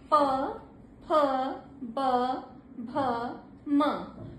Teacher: आपके दोनों ओठ स्पर्श करते हैं। प फ ब भ म तो ये इस बात का ध्यान दीजिए कि हमारा कौन सा वर्ण कहां से स्पर्श कर रहा है और वही इसका स्पर्श स्थान है वो फिक्स है।